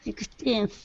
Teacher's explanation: Make sure to pronounce the N on 16th. Okay. If not, it sounds like 60th.